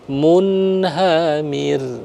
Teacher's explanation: kita baca jelas bimaim Mun hamir nah lalu hir hamir itu rnya kita sukun karena faktor waqaf maka dia dibaca tarkik Dibaca tipis